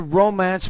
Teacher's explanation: if I'm using it as a verb I would put the stress in the second syllable